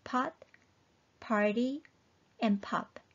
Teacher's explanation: The last one, piup, sounds like pot, party, and pop. It's an explosive sound and exactly the same as P in English.